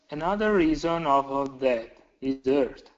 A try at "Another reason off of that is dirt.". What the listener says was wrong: Perfect intonation. Great job.